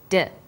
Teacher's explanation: you can feel your tongue against your tooth Ridge like this D and when you sayth your tongue is between